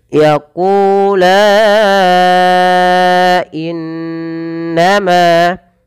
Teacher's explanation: maka lanya dipanjangkan empat harakat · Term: mad Jais munfasil